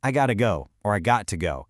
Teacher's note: the have is completely gone.